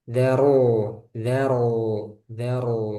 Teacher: Tuh, dalnya tipis, ro-nya tebal. Daro. Ketika masuk ke ro itu langsung tebal.